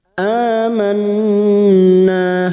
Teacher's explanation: Aman, a hamzah berharokat alif kecil di atas atau fathah berdiri namanya mat badal, cabang dari mat tabi'i, 2 harokat kita panjangkan. Amanna, nun yang bertasdid gunnah musaddada kita dengungkan 3 harokat. Na fathah diikuti alif, 2 harokat kita panjangkan.